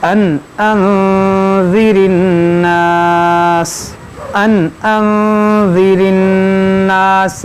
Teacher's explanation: دیکھیے ان یہاں پر دیکھیں نون ساکن کے بعد حمزہ ہے تو یہاں اظہار ہوگا, یہاں نون ساکن کے بعد ذال ہے تو یہاں اخفا ہوگا, یعنی یہاں پر غنہ ہوگا, یہاں پر غنہ نہیں ہوگا.